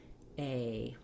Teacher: the a is long starts off tense and then the jaw relaxes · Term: diphthong